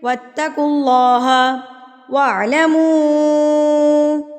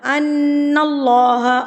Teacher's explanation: نون مشدد پر غنہ کیا جاتا ہے، اس کو کہتے ہیں غنہ، یہ والی ساؤنڈ جو ہے یہ والی ساؤنڈ اس کو غنہ کہتے ہیں، اس کو آپ نے ایک حرکت کے برابر غنہ کرنا ہوتا ہے۔